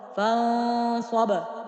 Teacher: در نون اخفا صورت میگیره به خاطر که بعد از نون ساکن صاد آمده